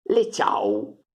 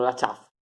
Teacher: a fine di parola la V si legge U, in quasi tutte le varietà di piemontese.